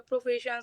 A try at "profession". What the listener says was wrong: So we don't quite get the schwa sound in there. So in English we have the sound which is used for almost every unstressed vowel sound. So profession, profession, profession, profession, profession, profession. Some people speak English as though they are reading the words profession.